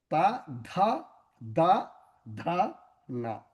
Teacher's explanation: When you say ta, the tongue is touching the danta. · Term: Dantavyas